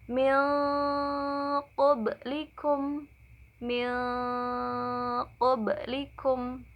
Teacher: Hurufnya itu ada 2, yaitu qaf dan kaf. Bunyi ikhfa ab'ad itu condongnya sangat jauh, yaitu jauh dari nun ya, jadi ke eng.